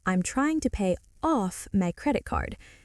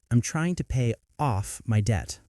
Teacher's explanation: the phrase pay off. The stress is on off.